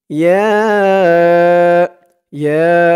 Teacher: এখানে ৩ আলিফ টান হবে, মধ্যে মুনফাসিল।